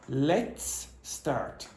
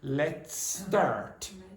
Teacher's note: So let's ends in an S. Start begins with an S. So one of the S's disappears and the S in the second one becomes longer.